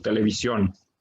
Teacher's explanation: le da un énfasis muy fuerte a la letra O, que podemos escuchar cuando decimos televisión. Y en este caso, es la sílaba tónica, y en todos los casos, digamos, es la misma que la que lleva acento.